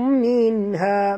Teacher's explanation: nun mati bertemu ha, tak boleh dengung, izhar halqi